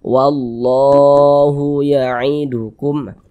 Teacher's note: menandakan huruf kalau di atasnya ada tanda seperti ini dibaca panjang sehingganya lafaz Allah ini dibaca panjang Mad Thobi'i panjangnya dua harakatah dua harakat tu kira-kira sepanjang dua ketukan sat